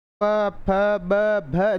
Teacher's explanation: देखो होंठ दोनों आपस में मिल रहे हैं, इन्हें औष्ठ्य बोलते हैं।